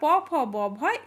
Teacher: এগুলি উচ্চারিত সময় দুটো ঠোঁট আমাদের স্পর্শ করে তাই এটিকে বলা হয় অষ্ঠবর্ণ